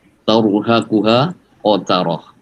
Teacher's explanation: Kemudian taru juga tebal, roh sukun didahului harokat fathah itu juga tebal, tafhim